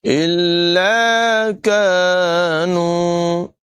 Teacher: کاف کی آواز باریک ہوگی، کاف کو بھی لمبا کریں گے، الف مدہ ہے، اور نون کو بھی لمبا کر کے پڑھیں گے، یہاں پر واو مدہ ہے۔